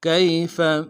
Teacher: فستعلمون کیف کاف کو یا کے ساتھ ملانا ہے، یا لین بغیر کھینچے پڑیں گے، فا کو نرم سے ادا کریں گے۔